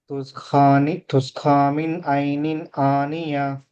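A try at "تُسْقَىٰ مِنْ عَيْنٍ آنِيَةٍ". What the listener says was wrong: అఖాల్లో ఖా చదువుతున్నారు మీరు, దీన్ని ఇంప్రూవ్ చేయాలి.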